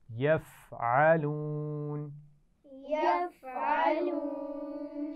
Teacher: فا پہ قلقلہ نہیں ہونا چاہیے، یہ ایسا نہ ہو کہ فا پر جزم کی بجائے زبر کا پتہ لگے